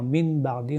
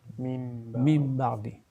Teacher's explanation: Lorsqu'on lit d'une façon continue, le son, le Nun Sakin se change en Mim. Au lieu de dire Min Ba'di, on va dire Mim Ba'di. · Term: Iqlab